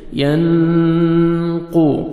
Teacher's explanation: क़ाफ को मोटा करके पढ़ेंगे, दौद को मोटा करके पढ़ेंगे।